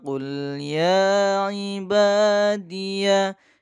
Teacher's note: Di situ ada mat tabi'i, ya dibaca panjang 2 harokat karena adanya fathah berdiri, kemudian alif bertemu ba juga dibaca panjang 2 harokat, namanya mat tabi'i.